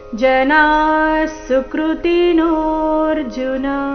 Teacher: ಜನಾ ಸುಕೃತಿ ವಿಸರ್ಗದ ಉಚ್ಚಾರಣೆ ಇಲ್ಲಿ ಅರ್ಧ ಸ ರೀತಿ ಜನಾ ಸುಕೃತಿ ನೋರ್ಜುನ ನೋ ನಂತರ ಅವಗ್ರಹ ಇದ್ದ ಕಾರಣ ಅದನ್ನ ಸ್ವಲ್ಪ ದೀರ್ಘ ಸಮಯ ಹೇಳಬೇಕು